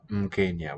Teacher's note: And sometimes, so an M works as a vowel. There's a syllabic M. Mkenya, we see it there, a prefix.